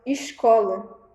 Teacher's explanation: Por exemplo eles falam escola né o s com som de X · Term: sotaque